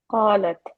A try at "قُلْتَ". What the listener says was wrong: No, alif goes away.